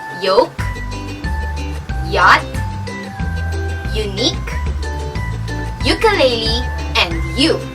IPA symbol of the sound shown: j